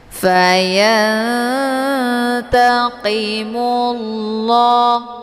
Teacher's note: Qi dibaca tebal ya karena posisinya adalah pangkal lidah menempel ke langit yang lembut ataupun langit yang lunak.